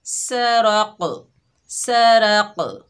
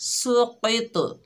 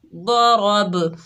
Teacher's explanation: جو حروف کلکلا ہیں ان کی آواز پلٹ کر واپس آ رہی ہے، یعنی ڈبل ساؤنڈ آ رہی ہے